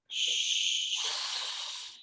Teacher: ¿Sienten una vibración? No. A eso se refiere con voiceless.